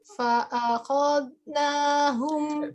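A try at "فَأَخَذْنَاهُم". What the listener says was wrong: Belum. Itu seperti putus. Ya. Nggak boleh ada putus antara zal dengan nun.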